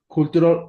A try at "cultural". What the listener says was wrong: No. Cultural no. Eso es en español. Cultu, no. Cultural.